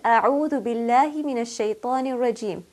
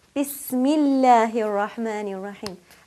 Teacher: Here the Allah is preceded by a ba with kasra. So because of the kasra, Allah will be pronounced lightly. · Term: light lam